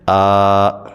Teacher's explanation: ایک زبر کو حمزہ کے اوپر پڑھیں گے اور دوسرے زبر کو الف سے بدل کے ہم اس کو کھینچ کے پڑھیں گے